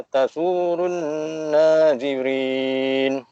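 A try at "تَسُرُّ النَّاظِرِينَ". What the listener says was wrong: Tasurun, jangan tasurun, tasurrun, surrun. Tarik ra tu, ada dua ra. Tak nak tasurun, tasurrun nazirin. Nampak tak? Surun sama surrun. Lain. Kalau surun, satu ra tertinggal. Dia tak boleh surun. Dia surrun. S-U-R.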